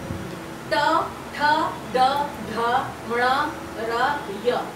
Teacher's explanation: উচ্চারণ স্থান মূর্ধা, এর জন্য এগুলোকে বলা হচ্ছে মূর্ধন্য বর্ণ